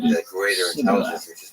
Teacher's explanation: In Gilead, people would pronounce this word with a sh sound on the front of it, so it would be pronounced shibboleth. But in Ephraim, they didn't say the word with the aspirated initial sound, and so they just used an S sound and said Sibboleth.